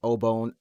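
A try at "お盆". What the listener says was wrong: the way that you pronounce it made it sound like oh bone or something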